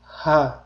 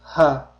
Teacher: o'pkamizdan chiqqan havo hech qanday to'siqqa uchramasdan to'g'ri bo'g'zimizdan chiqib ketadi. Ya'ni ha deb talaffuz qilinadi. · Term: ha harfi